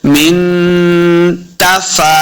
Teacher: मिन नून साकिन के बाद ता उर्फ इख्फा से है, तो यहाँ पे हमने इख्फा का कायदा करना है, यानी गुन्ना करके पढ़ेंगे